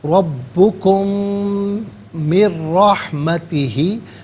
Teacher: کم میں میم ساکن ہے، اسے من کی میم کے ساتھ ملائیں گے، میم کی آواز کو غننے کے ساتھ ادا کریں گے ، من ساکن ہے، اسے رحمتی کے را کے ساتھ ملائیں